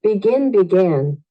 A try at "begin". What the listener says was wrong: begin, begin. No vas a decir begin, began. Muchas personas se aprenden los listados y los leen tal cual como están escritos. Entonces, ten cuidado, en especial cuando tenga una A.